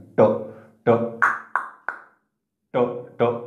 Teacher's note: ट म्हटलं की मूर्धन्य बघा जिभेचा शेंडा असा मध्यभागी लागतोय वर टाळूच्या दिशेने